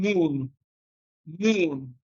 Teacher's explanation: bilabial nasal, in which case you use your lips, and we have one bilabial nasal, and that is M.